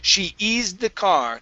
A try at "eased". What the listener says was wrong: Okay, give me a D sound. She eased. She eased the car.